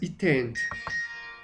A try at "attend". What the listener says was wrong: Más acentuada la D.